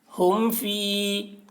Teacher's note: میم ساکن کے بعد با اور میم کے علاوہ، با اور میم کے علاوہ حرف یعنی فا آیا ہے، اس وجہ سے یہاں پر اظہار شفوی ہوگا، یعنی میم کو ظاہر کر کے پڑھیں گے، اس کو اظہار شفوی کہتے ہیں۔